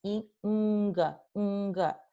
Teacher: See how you don't have to move your tongue at all to pronounce ng because they share the same punto de articulación, which is velar. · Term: alófono velar